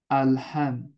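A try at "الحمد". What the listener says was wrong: এই তো গুড।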